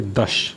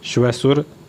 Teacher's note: तालव्य था जो तालुका से बोला जाता है श